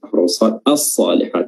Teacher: Dikatakan idgham karena langsung masuk atau melebur dengan huruf setelahnya yang sebelumnya itu sebenarnya bacanya al-salihat, ada huruf lamnya, namun karena dia huruf shad ya, makhraj lam dan shad berdekatan, maka langsung dileburkan huruf shad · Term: idgham syamsiyah